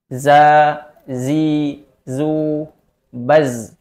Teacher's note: sifat yang pertama dari huruf Zai yaitu ada jahr yaitu tertahannya nafas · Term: jahar